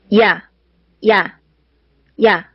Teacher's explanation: 이야 하면서 입이 작았다가 커지면서 발음이 되죠